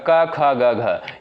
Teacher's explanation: उच्चारण स्थान कंठ हो जाएगा